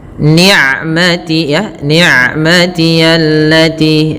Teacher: ain sifatnya bainiyah antara syiddah dengan rokhawah, tidak terlalu dialirkan suaranya dan tidak boleh diputus juga, tapi tengah-tengah.